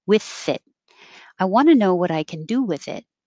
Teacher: keep the airflow going as you have with and pull your tongue back in for the t